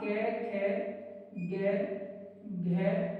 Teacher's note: starting के दोनों अघोष, last के तीनों सघोष